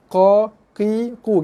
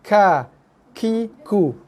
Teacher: Huruf qaf keluar kat kawasan pangkal leher yang paling dalam. Ka dia keluar pangkal leher juga tapi dia atas sikit. Okey, ka atas, qa dalam.